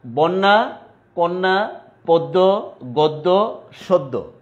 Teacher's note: শব্দের মধ্যে একটা জফলা থাকার কারণে আদ্য অ এর উচ্চারণটা উকারান্ত বা উকার উ এর মতো হচ্ছে